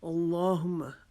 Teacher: اللہم باعث، اللہم، یہاں پہ اللہ کے نام کو ہم موٹا کریں گے کیونکہ اللہ کے نام سے پہلے زبر آ گئی، لام کو موٹا کریں گے، لیکن زبان کو موٹا، حرف کو موٹا ہم اپنے ہونٹوں کو گول کر کے نہیں کریں گے، بلکہ اپنی زبان کا پچھلا حصہ جو ہے وہ قدر تالو کی طرف لگائیں گے۔ اللہم، اور یہاں پر لام کے اوپر شد کی وجہ سے اور کھڑے زبر کی وجہ سے اس کو ایک الف کے جتنا لمبا کھینچ کے پڑھیں گے، اس کو جلدی سے اللہم نہیں پڑھیں گے۔